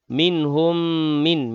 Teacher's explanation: mim mati bertemu mim sekali lagi, idgham mislain dengung di situ